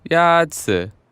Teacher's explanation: Yazi is pronounced with a first tone.